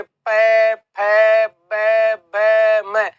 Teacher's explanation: प बोलेंगे तो होट आपस में स्पर्श होंगे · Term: प वर्ग